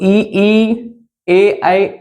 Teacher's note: अगर हम जीभ के आगे वाले भाग की बात करेंगे तो ई, ए, ऐ, ये आएंगे। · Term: जीभ के अग्रभाग से